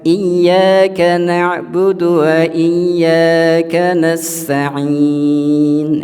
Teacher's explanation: ain adalah tawasud ya, tengah-tengah ya, bukan rokhawah